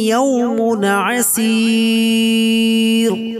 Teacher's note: ইয়ামুন তানমিনে পরে আইন আছে, হরফে ইজহার, এইজন্য গুণনা হবে না।